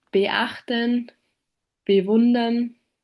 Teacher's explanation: The glottal plosive, also called the glottal stop, often appears within words like beachten, bewundern.